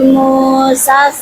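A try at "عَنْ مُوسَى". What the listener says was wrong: jangan gitu, jangan ulanginya Musal gitu.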